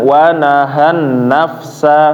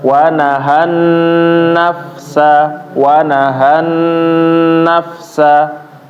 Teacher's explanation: amma nun bertasydid ditahan ya Bapak-bapak